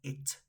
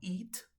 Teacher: Recordemos que la I de ese it no se pronuncia como nuestra I latina, ¿cierto? Alargada, sino es un sonido mucho más corto.